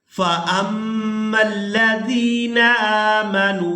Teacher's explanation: हमज़ा को मीम मुशद्दद के साथ मिलाएंगे तो गुन्ना के साथ अदा करेंगे।